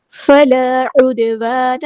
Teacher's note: الف مد آیا، 2 کاؤنٹ لمبا کریں گے · دال ساکن تو کلکلا ہو رہا ہے